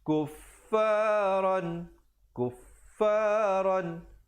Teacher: di situ izhar halqi, bunyi saja ron tanpa dipanjangkan terus masuk